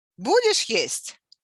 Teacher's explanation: The spikes of intonation indicates a question.